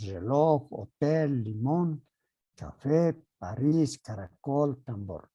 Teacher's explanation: Son las que llevan la elevación de voz en la última sílaba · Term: palabras agudas